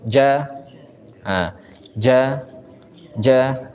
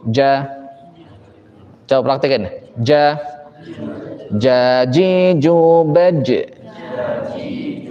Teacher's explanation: dia sifatnya syiddah ditekan Menempel dan tidak keluar nafas dia juga istifal huruf ja istial itu eh aqs lisan Turun